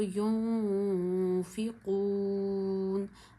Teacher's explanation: नून साकिन के बाद फ़ा है, फ़ा गले से अदा नहीं होता, होंठों से अदा होता है। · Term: इख्फा का गुन्ना